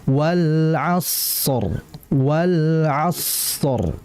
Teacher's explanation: aliran sod ini jauh lebih panjang dibandingkan lam. Karena dia sifatnya rikhawa, maka ditahan sodnya dulu dengan aliran, baru roknya.